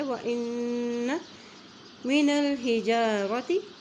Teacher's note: نون کی زبر کو لام سے ملا رہے ہیں کیونکہ لام کے اوپر جزم ہے